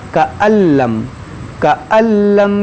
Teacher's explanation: اس نون کو اس لام میں داخل کر دیں گے، یہاں نون کی آواز نہیں آئے گی، یہاں پر لام کی آواز آئے گی۔